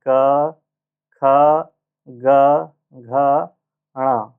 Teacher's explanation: क ख ग घ ण ये सब जो है आपके कंठ से उच्चारण होते हैं।